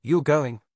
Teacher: For example, if you say you're going with rising intonation, it's a question. If you say you're going with falling intonation, it's a statement. Same words, different meaning.